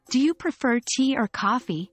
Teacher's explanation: the pitch of your voice typically rises on each option, with the final option having the highest pitch. This rising intonation pattern signals that the listener needs to make a selection.